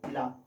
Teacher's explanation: पार्श्विक व्यंजन, जब हम ला का उच्चारण करते हैं तो हमारे मुख से निकलने वाली वायु जीभ के दोनों साइड से निकल जाती है। मतलब पार्श्विक मतलब होता है दोनों तरफ से, ठीक है, दोनों को बांटते हुए निकल जाती है, इसलिए पार्श्विक में कौन आ गया?